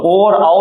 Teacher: तो ऐसे कंडीशन में होता क्या है कि आ का उच्चारण स्थान है कंठ, ऊ का उच्चारण स्थान है ओष्ठ, तो आ प्लस ऊ से मिलकर बनना ओ, तो भैया ये जो हो जाएगा ये हो जाएगा कंठोष्ठ। तो ओ और आओ दोनों कंठोष्ठ होते हैं, यानी कि गले और होठ का इस्तेमाल इनसे करेंगे। अब हमने देखा कि इनके उच्चारण में भी दो जगह संयुक्त हो रही हैं और इनके उच्चारण में भी दो जगह संयुक्त हो रही हैं, तो इसलिए इन्हें कहते हैं हम संयुक्त स्वर।